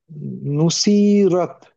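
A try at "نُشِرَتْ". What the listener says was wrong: হুম, শিনটা টান হয়ে যাচ্ছে, তাড়াতাড়ি পড়তে হবে, হ্যাঁ? नुशीरत।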